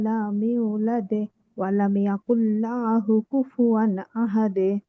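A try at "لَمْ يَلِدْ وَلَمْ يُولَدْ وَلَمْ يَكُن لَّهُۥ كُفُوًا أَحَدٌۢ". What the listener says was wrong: আপু উচ্চারণগুলো একটু বেশি নর্মাল হয়ে গেছে, বিশেষ করে হায়ের জায়গায় হা হয়েছে।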